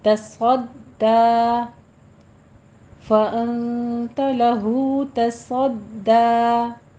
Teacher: ता भी बारीक है, दाल भी बारीक है, सौद दरमियान में पुर पढ़ा जाएगा सीटी की आवाज़ के साथ